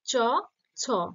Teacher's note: চ, ছ, তালব্য বা তালুতে স্পর্শ করছে, তাই এটা অঘোষ ব্যঞ্জন কিন্তু তালব্য ধ্বনি